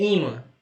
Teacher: São duas sílabas. E a penúltima é mais forte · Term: paroxítona